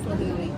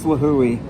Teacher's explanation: You pronounce each vowel separately.